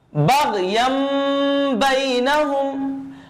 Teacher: मैंने यहां पर तनवीन की जो नून की आवाज थी हमने उसको नहीं पढ़ा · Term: इक़लाब